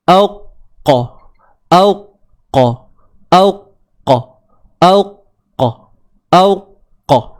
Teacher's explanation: Suara kita tertahan kan? Selepas selesai saja syiddah itu, maka barulah datang qalqalah.